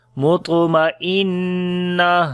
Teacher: نون کے اوپر شد ہے، غنہ کریں گے، تا ہا بن جائے گی جب رکیں گے، تو اس کے اوپر پھر ہمس آ جائے گی.